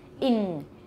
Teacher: you've got your tongue tip on your alveolar ridge but you've also got the back of your tongue on your soft palate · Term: double articulation